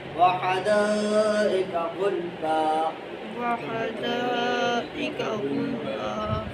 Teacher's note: اب غل پہ جب آپ وقفہ چھوٹا سا کرتے ہیں تو پھر کلکلا آٹومیٹیکلی نہیں پیدا ہوتا، لیکن آپ وقف کرتے ساتھ ساتھ اگلا ہاتھ اٹھائیں گے تو کلکلا پیدا ہو جاتا ہے۔